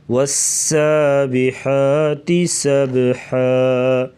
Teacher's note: سین سیٹی جیسی آواز نکالیں گے, سختی سے پڑھا جائے گا